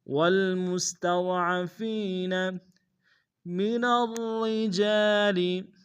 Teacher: پہلا را موٹا ہوگا، دوسرا را باریک، شد میں زور دیں گے، جیم سے الف مدہ ایک دائیں میں کھینچیں گے۔